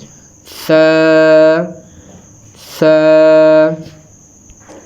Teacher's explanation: تا تا، ثا ثا، یہ جو ہمارے اوپر والے اور جو نیچے والے دونوں دانت ہیں، اوپر نیچے والے، اوپر والے دانتوں کو ثنائے علیہ کہتے ہیں، نیچے والے دانتوں کو ثنائے سفلی کہتے ہیں۔ اوپر والے اور نیچے والے دونوں دانتوں کے درمیان زبان کی نوک کو رکھ کے اس کو ادا کریں